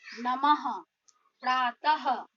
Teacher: जब हम विसर्ग का उच्चारण करते हैं तो उसके उच्चारण में अंत में ह आता है